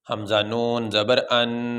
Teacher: حرفوں میں سے کوئی حرف نہیں آیا، اس لیے یہاں پہ غنہ کریں گے اور غنہ ناک میں ہوگا